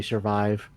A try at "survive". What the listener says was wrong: It's because you had an H in there, that's why. I can say survive without the H. survive. Well, okay, just remember this in your mind, okay?